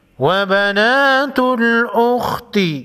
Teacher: خا کو موٹا پڑھیں گے، حروف مستعلیہ میں سے ہے